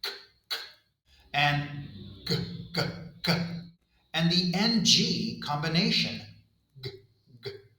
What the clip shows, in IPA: k, g, and ŋ